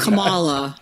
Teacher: I remember her putting the emphasis on the second syllable